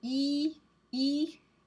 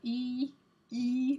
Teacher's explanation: You do E, E, and you think about where your tongue is. Your tongue is sort of focused in the front of your mouth, and it's toward the top of your mouth. E, E, so it's called a front top sound.